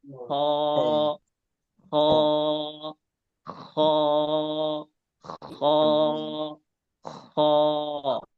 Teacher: আবারও বুঝেন, যেখান থেকে আমাদের যে থুতু ফেলার সময় আমরা যে আওয়াজটা করি ভিতর থেকে একদম, সেখান থেকেই হ উচ্চারণ হয়